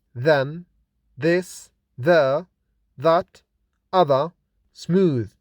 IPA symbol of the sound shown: ð